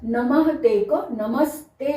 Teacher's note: यहाँ पर नमः ते में है कि अगर विसर्ग से पहले ह्रस्व अ है और उसके बाद यदि त थ में से कोई वर्ण आया है, तब विसर्ग का, इस विसर्ग का स हो जाता है। इसलिए यहाँ पर नमः ते को नमस्ते बन गया, ये आधा स हो गया, यहाँ पर श बना, यहाँ पर स बन गया।